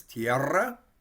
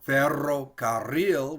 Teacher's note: you can hear we kind of roll it we're going to trill it